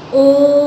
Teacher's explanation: ह्रस्व से 3 गुना समय लगाना है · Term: प्लुत स्वर